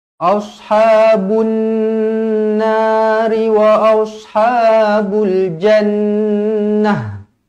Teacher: La yastawi ashabunna alif lam syamsiah, dekat sini nun yang bertanda sabdu, jadi kita sabdukan, kita dengungkan dia. Dua harakat, jangan kurang dari dua harakat.